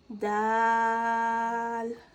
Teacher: دال پہ مد ہونے کی وجہ سے اسے بھی ہم 3 الف یعنی 3 سیکنڈ لمبا کھینچ کے پڑھیں گے